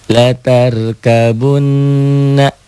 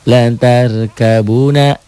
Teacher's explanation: gunnah, nunnya bersidah bertasydid. Hilangkan sidahnya.